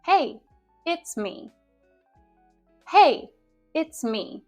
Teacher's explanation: at the beginning of the sentence my intonation Rises and then it falls at the end